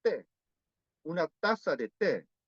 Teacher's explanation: se pronuncia con ápico dental y ápice de lengua toca los dientes